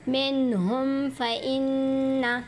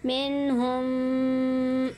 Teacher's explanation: ہم لوگ یوں نہیں پڑھیں گے منہم، ایسے غنہ نہیں کریں گے، اظہار کریں گے غنہ کے بغیر۔ اظہار کا مطلب ہوتا ہے ظاہر کرنا، ٹو شو۔